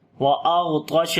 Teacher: غین اور طا دونوں کو موٹا پڑھیں گے